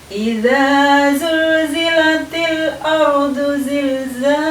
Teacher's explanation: ketika kita mengucapkan huruf za, maka di situ ada desis yang keluar dari mulut kita